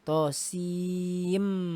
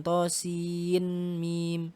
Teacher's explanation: Jadi hati-hati nggak dibaca nunnya, ya. Nggak dibaca nunnya, langsung idgham ke mim. Tosim, bukan tosin mim.